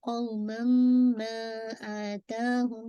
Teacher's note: तनवीन के बाद मीम है, तो ये भी आपका इदगाम कामिल है मुकम्मल